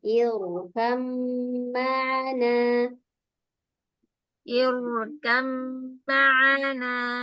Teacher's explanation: Roknya kita tebalkan kalau kita belajar. Ini didahului roknya dahului hamzah wasol. Jadi kita baca tebal.